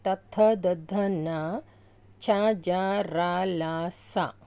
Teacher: దంత్యములు అంటే దంతముల నుండి పుట్టినవి